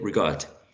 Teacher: it's going to be the second syllable the one stressed